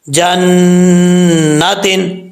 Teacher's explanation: نون کے اوپر شد ہے اس لیے ایک الف کی مقدار غنہ کیا جائے گا